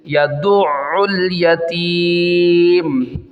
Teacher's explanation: دال کو عین کے ساتھ ملانا ہے، تشدید ہے